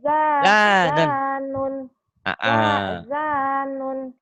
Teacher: Zannya panjang, nunnya pendek